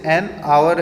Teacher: यहाँ पर ये वर्ड शुरू H से हो रहा है, लेकिन जब हम इसको बोलते हैं तो आवर बोलते हैं, और आवर बोलते हैं तो आ की साउंड आती है, H की साउंड नहीं आती है